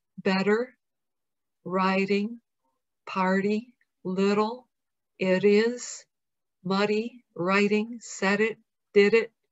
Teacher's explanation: It's called a flap because your tongue briefly, quickly flaps your soft palate.